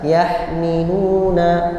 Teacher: Begitu juga contoh berikutnya yang saghir ini yahmiluna, ha sukun bertemu dengan mim. Ha sebagaimana kita pelajari makhrajnya di tenggorokan tengah. Ya, sedangkan mim di bibir jauh sekali. Nah, karena sangat jauh maka dibaca idhar jelas yahmiluna.